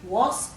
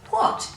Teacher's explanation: there's no air after the W, so we don't have to write an H.